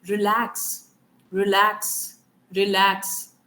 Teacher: अगर मैं इसको कोई एक्सेंट डाल के भी नहीं, सिंपल इंडियन इंग्लिश में बोलती हूँ रिलैक्स, रिलैक्स, तो कहां पे आ रहा है स्ट्रेस, ल साउंड पे, right. सो the stress is marked on the ल sound